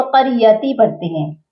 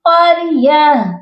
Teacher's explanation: یہاں پر ہم تا کی زیر کو نہیں پڑھیں گے اور اینڈ پر ہا کو ساکن کریں گے